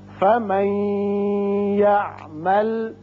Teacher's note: نون ساکن کے بعد جب یا آتا ہے تو ادغام غننے کے ساتھ کرتے ہیں